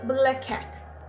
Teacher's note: instead of pronouncing them twice you have to pronounce them once